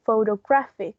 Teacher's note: There's a stress in the first one, but it's not as prominent as the main one that it's on the third syllable.